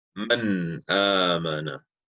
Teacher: That's when Noon Sakin or Tanween is followed by one of the six Halqi letters, Hamza, Ha, Ain, Ha, Ghain, Kha. The Noon Sakin or Tanween is pronounced from its original articulation point without any added nasalization or ghun. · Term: Izhar